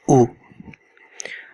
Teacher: it always come above the letter and it's sound is ooh the special thing in this sound is that at the end you have to round your lips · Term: pesh